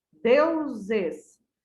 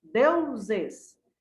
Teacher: Deu é uma sílaba tônica porque ela é mais forte que os es.